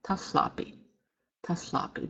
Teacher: So if you were to help yourself in writing this as it sounds, you would write TALH, HLAPI, taflapi, taflapi. The word for 5 has a double aspirated L sound